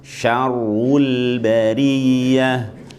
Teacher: Ru-nya mencucu kan, tapi L-nya enggak.